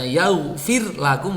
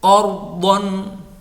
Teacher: ketika saya membaca yaghfir lakum, roknya tipis. Qardon, roknya tebal.